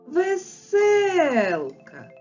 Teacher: веселка наголошений другий звук е і наголошений другий склад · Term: наголошений склад